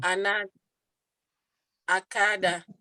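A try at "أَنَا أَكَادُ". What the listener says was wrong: Akadu, domah.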